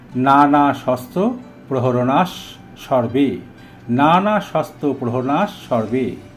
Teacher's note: নানা শস্ত্র প্রহরণাহা এর পরে সর্বে শব্দটি থাকার জন্য বিসর্গের উচ্চারণ দন্তস্ব হয়েছে